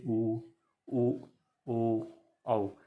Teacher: जब देखेंगे तो आप होठ होठ का जो बनावट देखेंगे वो गोल हो जाएगा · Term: वृत्ताकार